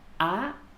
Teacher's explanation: so we just force the voice up but never come down just up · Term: high tone